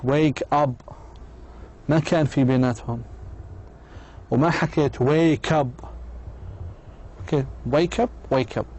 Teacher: The K sound links the words in the same way, regardless if the K sound is the last sound of the first word or the first sound of the second word.